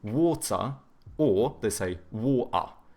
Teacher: Whereas like the British, they tend to have either hard T's or they do like the glottal T, so but then they do a schwa instead of pronouncing the R